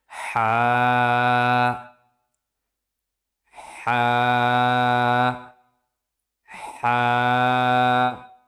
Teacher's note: হা উচ্চারিত হয় কণ্ঠনালীর মধ্যখান থেকে।